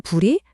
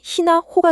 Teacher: 고대 한국어 특유의 팍팍 터지는 파열음, 피읍이나 비읍 소리가 바다를 건너 섬나라 특유의 환경에 맞춰지면서 입술에서 가볍게 새어나오는 히읗 계열로 확 부드러워집니다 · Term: 자음 약화 및 순화 법칙